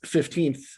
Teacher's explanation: On the 15th, whereas you're using half of the word 15th to form the stress syllable, because the first syllable in 15th is stressed